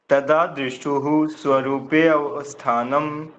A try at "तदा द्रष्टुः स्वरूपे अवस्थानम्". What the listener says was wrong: ठीक है जी, बहुत बढ़िया।